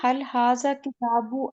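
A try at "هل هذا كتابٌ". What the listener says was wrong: دیکھیں ہاضا کتابوں، پہلے تو یہ تنوین کہاں چلی گئی مجھے یہ نہیں سمجھ آ رہا. یہ شاید غلطی ہے پہلی تو، ہے نا. تنوین کہاں گئی؟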